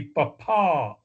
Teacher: The correct way to say P on the radio with the emphasized syllable underlined would be papa, with the last PA part emphasized.